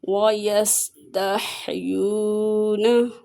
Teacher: سین حرف صفیریہ میں سے ہے، سیٹی کی آواز نکلے گی، یا کو کھینچ کے پڑھیں گے، واؤ مدہ ہے۔